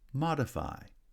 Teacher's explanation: modify actually has primary stress on the first syllable and secondary stress on the third syllable.